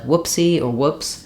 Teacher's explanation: good book vowel so letters o o do do sometimes say the uh sound which is LAX rather than the ooh sound which is tense